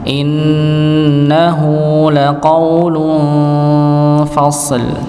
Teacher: Tanwin bertemu dengan huruf fa maka disamarkan ditahan.